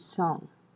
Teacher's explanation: Then we have the nasals, which we can mention the NG form, the ing form, which is used by the velar. The place of articulation is the velar, and the keyword is song.